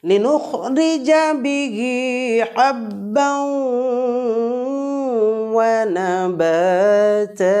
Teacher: তানবিনের পরে ওয়াও বর্ণ যুক্ত করে মিলিয়ে গুন্না করে পড়ব এই গুন্নাটাকে বলা হবে ইদগামে বাগুন্না বা ইদগামে মাআল গুন্না লিনুখরিজা